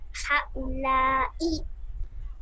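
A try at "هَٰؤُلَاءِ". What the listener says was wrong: হা উলা, হায়ও টান হবে, লায়ও টান হবে। আহা উলা চার আলিফ দেখছেন এখানে মধ্যে মুত্তাসিল, এখানেও মধ্যে মুত্তাসিল।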